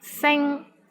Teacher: the initial sound is S, and final sound is ing, I-N-G, and the syllable is in the first tone